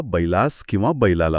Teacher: इथे जर आपण ध्वनीशास्त्राचा म्हणजे फोनेटिक्सचा विचार केला ना, तर बैला असं म्हणताना जिभेला दोनदा ल वर जोर द्यावा लागतो